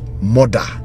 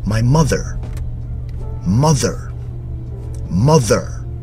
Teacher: But in the American accent, you hear the R at the end.